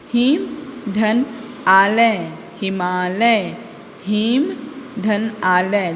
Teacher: देखो अ और आ का उच्चारण आ रहा है इसलिए हिमालय। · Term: संधि